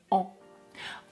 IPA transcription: ã